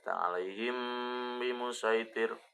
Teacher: mim sukun bertemu dengan huruf ba namanya adalah ikhfa syafawi harus samar bacaannya